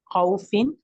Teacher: واؤ ساکن سے پہلے جو زبر آ گیا ہے اس لیے یہ واؤ لین بن گیا ہے، اس کو نرم کر کے پڑھنا